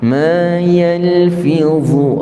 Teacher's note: dha tebal. Hujung lidah kita terkeluar sedikit